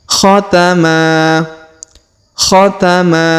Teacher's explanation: huruf Ma kita panjangkan dua harakat karena di depannya terdapat Alif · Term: Mad asli